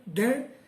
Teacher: Já o DAN já é um fonema, D é uma partícula que é linguodental, exige um esforço maior da língua, DAN, e o A, como é nasalizado pelo N, exige o ar ele sai dos pulmões e tem que passar, além da boca, tem que passar pelas fossas nasais.